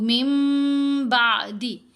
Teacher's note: تو یہاں پڑھیں گے إِلَّا الَّذِينَ تَابُوا مِن بَعْدِ، من بعدی نہیں پڑھنا، نون ساکن کے بعد ہے با، نون ساکن یا تنوین کے بعد اگر حرف با آ جائے تو ہم نے نون کی آواز کو میم کی آواز میں بدل کر پڑھنا ہے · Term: اقلاب